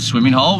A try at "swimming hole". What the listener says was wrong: I actually think it's swimming hole. No G. Swimming hole.